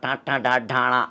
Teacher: నాలికను పైకి తన్నుతున్న ట ట డ డ అనే మూర్ధన్యాలు